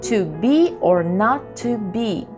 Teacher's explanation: the first syllable is unstressed the second one is stressed for example to be or not to be unstressed stressed unstressed